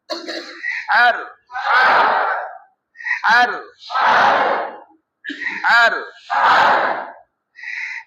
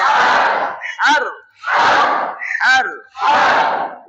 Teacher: বাতাস বের করে আরো গলা চিপে গলার মধ্যখান থেকে